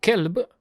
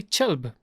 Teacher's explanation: some dialects have a che ch sound instead of a k sound